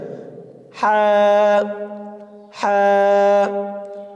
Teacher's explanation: কণ্ঠনালীর মধ্যখান হইতে উচ্চারিত হয় হা হা। গলার ভিতর থেকে আওয়াজটা একদম চিকুন করে আসবে